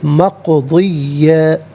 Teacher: مق میں آپ دیکھیں قاف ساکن ہے لیکن حرف قلقلہ ہے تو آواز لوٹتی بھی محسوس ہونی چاہیے